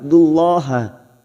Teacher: lam jalala kita baca tafkim karena sebelumnya ada harakat dumma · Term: Lam jalalah